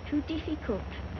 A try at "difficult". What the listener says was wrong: Diff. Not deaf. The word is difficult.